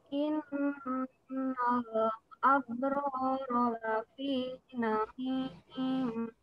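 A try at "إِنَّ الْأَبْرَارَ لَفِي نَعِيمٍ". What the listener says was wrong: Innal abrara lafi na'im. Ainnya jangan ke hidung. Na'im. Ya, innal Sekarang baknya ab. Lepasin dulu baru qara. Abro, abro, abro, kadang saya juga masih abro, lafi, la. Ya, innal. Sekarang lamnya.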